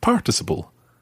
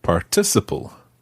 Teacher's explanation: before particularly in the states will probably know it as participle in the UK we pronounce it stressing the second syllable